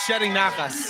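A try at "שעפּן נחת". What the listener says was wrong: Shepping. There's a P.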